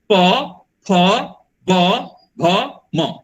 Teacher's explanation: ये सब ओष्ठ होते हैं, इनको बोलते समय में हम लोग ओठ को बंद कर लेते हैं, और म बोलते समय म आपका नाक का उपयोग करते हैं।